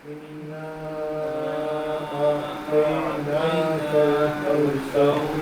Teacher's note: غنہ کا مطلب ہے کہ نون کو تھوڑی دیر ٹھہر کر ادا کریں گے، اس کو لمبا کیا جائے گا. اس کے بعد الف پہ چھوٹی مد ہے، اس کو بھی 2 سے 4 سیکنڈ آپ کہہ لیں لمبا کیا جائے گا.